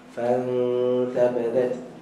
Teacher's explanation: dengung yang nipis sebab nun mati jumpa ta huruf nipis, maka kita senyumkan dengung tu fantabadat.